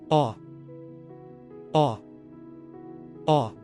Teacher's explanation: Next is aw. Open your mouth wide. It's the midtone.